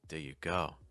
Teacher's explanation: holding that D sound in did, and I can even do it a little bit more